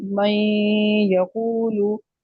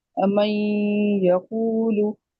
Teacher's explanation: आपकी नाक में आवाज आ रही है, तो सिफ्त गुन्ना जो है नून की वो बाकी रही है